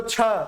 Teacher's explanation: फिर बोलो छ, ज्यादा हवा निकल रही है ना, ऐसे नहीं करना है, ऐसे में हवा पता नहीं चलेगी, यहां पता चलेगी।